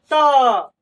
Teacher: जैसे हम बोलेंगे त, जीभ जो है ना दांत में सट जा रहा है